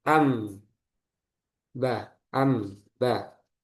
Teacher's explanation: Nah, ini bertemu dengan huruf ba. Maka dirubah nunnya ke suara mim. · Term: iqlab